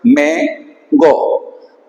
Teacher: hemos suprimido la epsilon de ego, entonces originalmente es me-ego